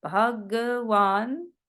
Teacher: that aspirated H with the Bhagavan is something that we're not used to in English